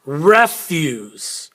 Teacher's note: can you hear how re is higher use is lower or there's more in stress on the first one and less